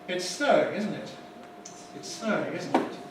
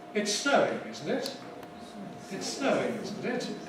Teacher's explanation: the falling one isn't really a question at all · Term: falling tags